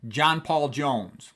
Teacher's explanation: That pop, pop, pop, 3 stressed syllables in a row.